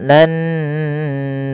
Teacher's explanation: menahan bunyi suara nunnya karena pada lafal ini ada bacaan ghunah yaitu dengan menahan suara memasukkan ke rongga hidung kita